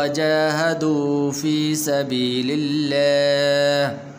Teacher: لفظ اللہ کو پر نہیں کرنا بلکہ باریک کر کے پڑھنا ہے